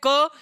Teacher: जब आप बोलते हैं क तो वायु आपके हाथ पे नहीं लगती है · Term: अल्पप्राण